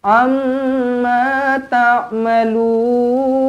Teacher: Mim sabdu di sini didengungkan dengan dua harakat. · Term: wajibul gunna